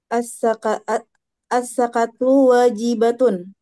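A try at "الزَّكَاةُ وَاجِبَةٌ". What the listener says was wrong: Az-zakatu, kayaknya tolong dipanjangin sedikit. Az-zakatu,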